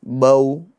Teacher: واو بول کے آواز ختم کر دینی, اسٹاپ, وائس کو روک دینا ہے. اس طریقے سے واو کو تو ہونٹوں کو گول کر کے ادا کریں گے.